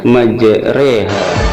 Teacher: huruf ro harus dibaca miring re seperti kata sate